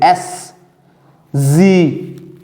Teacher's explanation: S and Z are alveolar fricatives with the friction created at the alveolar ridge.